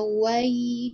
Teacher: Di situ ada wai, di situ ada huruf lin, fathah bertemu dengan ya sukun dibaca lin. Wai ta, lebih dari satu harokat dan tidak boleh lebih dari dua harokat ya.